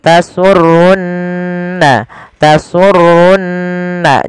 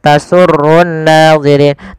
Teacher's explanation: maka ia kita baca dengan bacaan gunah ditahan suara nunnya